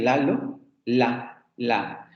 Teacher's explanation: las líquidas laterales, la primera líquida lateral sonora, la L de Lalo, la.